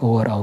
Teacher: तो ओ और औका जो हो गया कंठ और ओष्ठ ओठ कंठोष्ठ जिसको कहते हैं कंठ और ओठ से ओ और औ का उच्चारण होता है